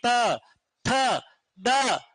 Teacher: दांत स्पर्श करते हैं, दांतों में जबान टकराती है